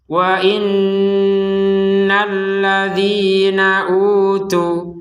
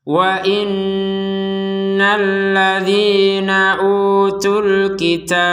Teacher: Panjang dua harokat. Kalau digabungkan, maka panjang dua harokatnya hilang. Langsung masuk kepada alif lam.